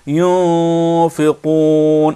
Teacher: نون پر سکون ہو اور اس کے بعد فا آئے تو نون کی آواز چھپ کر ادا ہوتی ہے. نون کی آواز ناک میں چھپ کر ادا ہوتی ہے